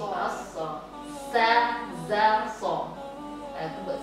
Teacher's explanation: di huruf sa, za, so ini dia berbunyi ada sofir. Istilah sofir itu bunyi s, gitu, bunyi s.